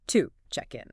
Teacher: to isn't pronounced with its full, strong oo vowel sound, like if you said the word to. Instead, it gets reduced. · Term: the schwa sound